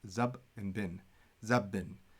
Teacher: the beth gets shared, so it becomes zab bin. It has to be a hard b, so we can make the sound twice.